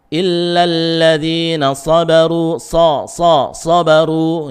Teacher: Maka pangkal lidahnya dinaikkan sehingga bunyinya tebal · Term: huruf isti'la